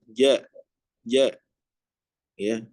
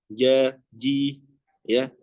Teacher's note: Makhrajnya itu berada di tengah-tengah lidah ya. Ja ya, kemudian ditempelkan ke atas. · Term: huruf J